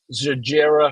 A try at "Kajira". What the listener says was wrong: I think it's a hard. It's like a K. I think it's Kajira, but anyway, that's all right.